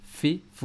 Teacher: ऊपर के दांत और नीचे वाले होंठ का जो है गीलापन, ये जगह है ना, ये फ़ा की अदायगी की जगह, फ़ा के निकलने की जगह।